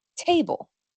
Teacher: pareciera que es la lengua la que bloquea el aire antes de soltarla, pero de hecho es la garganta.